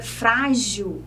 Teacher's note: a sílaba frá, que é a penúltima sílaba, é a sílaba mais forte